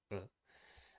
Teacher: the A at the end was reduced to a schwa